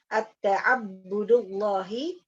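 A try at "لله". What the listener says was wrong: Lillahi. Lillahi. Ini tidak ada alifnya. Jadi lillahi.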